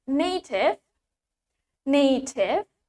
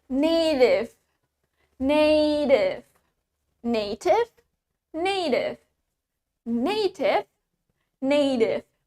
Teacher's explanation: now in American we pronounce it with d